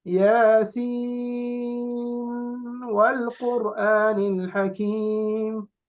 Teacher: Does not merge the nun into the waw when joining the two words.